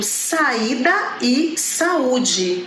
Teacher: Mas nesse caso, o I e o U, eles estão como acentuados, né? Então o som é forte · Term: hiato